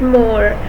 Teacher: Ma is articulated by the meeting of the two lips but in such a way that velum is lowered and the air comes out of the nose. So its manner of formation is nasal and Ma is a bilabial nasal.